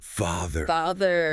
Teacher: But it is actually much softer. The A in father is an open, relaxed vowel. Your jaw drops slightly.